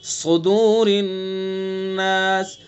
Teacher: और स्वाद के बाद जो वाव है और उसके बाद रा है, रा के नीचे जेर है तो इसलिए रा को बारीक पढ़ेंगे, सुदूरिन नास, और नून के अंदर गुन्ना करेंगे चूंकि मुशद्दद है।